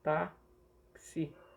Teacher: esse X aqui, ele tem som de KS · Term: dífono